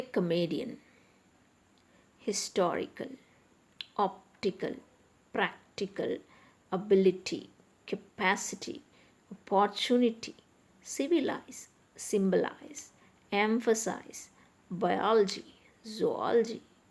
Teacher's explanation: So here in each case the stress is on the third syllable from the end.